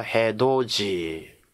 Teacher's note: 디귿이 이를 만났을 때는 지읒으로 발음 나죠